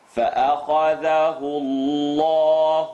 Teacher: The letter before the lam in Allah, la mushaddad lafzul jalala. The u makes the lam in Allah heavy.